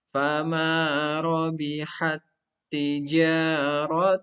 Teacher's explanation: ada pertemuan dua huruf ta, yang satu sukun diidghamkan ke huruf ta yang kedua yang berharokat